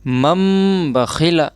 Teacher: نون ساکن یا تنوین کو میم سے بدل کر غنہ اور اخفا کے ساتھ پڑھیں گے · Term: اقلاب